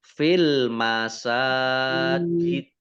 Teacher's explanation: Kemudian dalnya dibaca sukun karena wakof. Nah, karena dalnya dibaca sukun maka menjadi kolkolah ya. Karena dal sukun itu termasuk huruf kolkolah sehingga dibaca fil masajid.